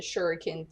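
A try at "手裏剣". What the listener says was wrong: Shuriken. There is an I.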